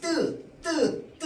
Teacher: 성대 근육이 긴장되고요. 숨이 거세게 나오지 않는 소리입니다. · 성대 근육이 긴장되면서 숨이 거색게 나오지 않는 소리를 된 소리라고 합니다. 우리가 뜨 뜨 뜨 이러면 성대 근육은 긴장되는데 숨은 거색이 안 나와.